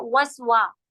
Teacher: वसवा में आपने क्या ध्यान दिया कि वाह हम गोल होठों से पढ़े, वाह वाह नहीं होता, वाह जो है ये फा के मखरज पे नहीं पढ़ा जाएगा, वाह दोनों होठ गोल से होता है